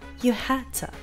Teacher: First, the D in had is pronounced as a stop consonant, which then immediately connects with to. The word to gets reduced to ta, so we hear you had to.